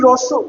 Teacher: যখন আমি রস উ বলছি তখন জিহ্বাটা আস্তে আস্তে ভেতরে চলে যাচ্ছে। অর্থাৎ মুখের ভেতরে ঢুকে যাচ্ছে। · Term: পশ্চাৎ ধ্বনি